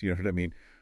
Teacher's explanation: when it's a statement with a falling tone